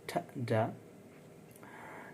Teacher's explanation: Tip of tongue, alveolar ridge